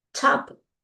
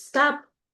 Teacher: you feel the air on top, not as much in stop